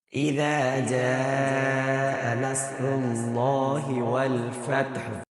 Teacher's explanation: زال کے بعد الف ہے، حرف مدہ ہے، 1 سیکنڈ لمبا کریں گے۔ جیم کے بعد الف بھی ہے اور اوپر مد ہے، تو یہ مد کو ہم 3 یا 4 سیکنڈ تک لمبا کریں گے۔ را کے اوپر پیش ہے، را کو لام کے ساتھ جب ملائیں گے تو اس کو موٹا پڑھیں گے اور لام کو بھی موٹا پڑھیں گے۔